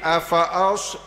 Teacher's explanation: Bila tersebut sod, pangkalan lidah kita ni akan terangkat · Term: isti'la